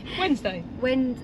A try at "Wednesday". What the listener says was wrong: No, but you don't pronounce the D, do you?